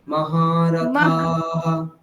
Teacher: মহারথাঃ, থাকার আকারটা টেনে তারপর বিসর্গ।